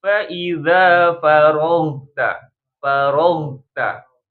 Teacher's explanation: Fa idza ghain punya sifat namanya rokhwa, suaranya mengalir.